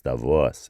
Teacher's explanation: But notice how the accent is on the second syllable. It's Davos, and it's almost like a voice.